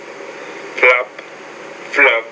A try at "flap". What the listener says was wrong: The P's a voiceless consonant, so you say flap. The B's a voice consonant, so you say flab. Cap, cab. Lap, lab. So, when the P's in the beginning of the word, it's not a problem. I can definitely understand when you're doing the P and the B, but when the P and the B's at the end of the word, that's when I'm having trouble.